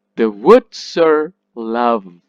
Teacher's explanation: R is unstressed, so it becomes r, r, very short and weak.